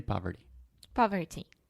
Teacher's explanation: when you start speaking faster that t will get softer and softer